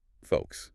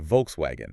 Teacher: But in German, the V, it hardens up. It becomes the English F. >> V equals F.